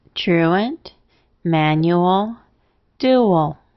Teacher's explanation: The ALs are unaccented at the end and therefore schwa.